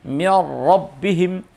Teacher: ketika nun sukun atau tanwin bertemu dengan huruf ra maka melebur atau menyatu sehingga karena menyatu dari dua menjadi satu sehingga hurufnya nun atau tanwin berubah menjadi huruf ra. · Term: idgham kamil